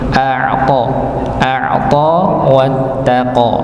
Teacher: ini kita dapati huruf ain yang sukun maka ditekan pada pembacaan a'ta